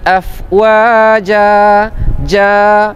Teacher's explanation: Dua harakat namanya mad iwad. Berlaku ketika wakaf saja. Kalau tak wakaf tak ada mad iwad ya.